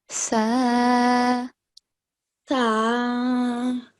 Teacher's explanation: for the letter Sa, we are touching the tip of the tongue with the edge of the upper front two teeth. Okay? Sa.